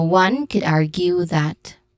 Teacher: argue, which has a stressed syllable in the first one, R, and then Q, which has a long U sound.